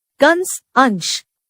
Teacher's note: अनुस्वार इनका उच्चारण नासिका से किया जाता है।